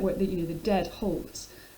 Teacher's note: the dead halt, which enacts itself in metre by the heavy stress on these two syllables, and it also it's the shortest line in the poem, so there's a sense of something kind of stopping up, something kind of obstructing, which again also brings the idea of death back into the poem.